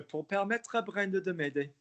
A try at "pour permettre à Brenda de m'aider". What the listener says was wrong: Make less of the lips, pour permettre à Brenda de m'aider, and you won't get the spoonerism